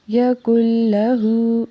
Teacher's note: کل لہو میں نے پڑھا ہے، نون کی آواز مدغم ہو گئی ہے